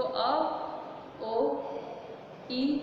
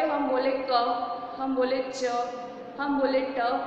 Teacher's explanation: हवा का जो रुकाव होता है वो कहीं नहीं होता है, हवा सीधी बाहर आती है अबाध गति से, यानी सीधी ही बाहर निकलती है, वो स्वर कहलाते हैं हमारे।